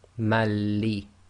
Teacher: Okay, and then when you apply the idghaam, you effectively drop the noon sakin, so you end up with ma, and that joins to the lam with shadda